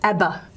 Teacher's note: you might get a very voiced voice stop in the middle of a word between two vowels like in the 1980s band name abba that'll be an environment